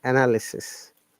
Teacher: a is schwa sound and y is another schwa sound, and it should be pronounced as analysis, not analysis.